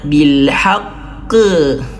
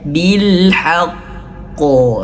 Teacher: Namun ketentuannya huruf qaf ini tebal, maka dia akan terus tebal. Bil haqqo. Jangan bil haqqe, tidak, tapi ko gitu ya.